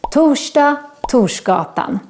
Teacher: we make this sh sound when we write together R and S in Swedish